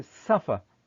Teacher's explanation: i say suffer i stress the first syllable